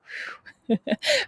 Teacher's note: Make sure that when you say the W, ooh, your lips are puckered, kind of like a kissy face.